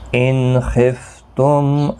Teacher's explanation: ان نون ساکن کے بعد خا آیا ہے، یہاں پر اظہار حلقی ہوگا، غنہ نہیں کریں گے